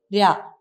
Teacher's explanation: ചോദിച്ചാൽ നമുക്കറിയണം ധ്രുത സ്പർശം എന്ന് ഉദ്ദേശിക്കുന്നത് ഉൽക്ഷിപ്തങ്ങളെയാണ് ധ്രുത സ്പർശം എന്ന് പറയുന്നത് ഉച്ചാരണ അവയവം ഉച്ചാരണ സ്ഥാനത്ത് വേഗത്തിൽ ഒരു പ്രാവശ്യം സ്പർശിച്ച് അത്രയും വേഗത്തിൽ തന്നെ പിൻവാങ്ങുന്നു